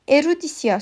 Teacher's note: Yəni ahəng qanunu pozulub. Erudisiya sözündə e, i saitləri incə saitlərdir. U və a saitləri qalın saitlərdir. Yəni burda da artıq ahəng qanunu pozulub.